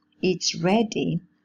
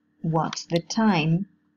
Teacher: the voiceless alveolar fricative sound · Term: progressive assimilation